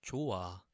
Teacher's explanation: the 히읗 받침, the H sound is removed